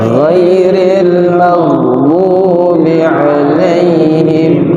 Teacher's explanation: gak boleh dipantulkan karena bukan huruf qalqalah